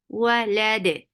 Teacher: For fatha, open your jaws. Lam is short, but it will be attached with dal because we are giving temporary sukoon because of the waqf, and dal will get qalqala, sifa of qalqala.